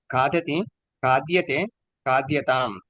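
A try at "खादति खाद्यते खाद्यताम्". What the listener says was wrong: ఉత్తమం.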